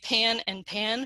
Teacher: So if you are south of that, if you're in Missouri or you're in Kansas, you might say pan and pan for pin and pen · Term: pin-pen merger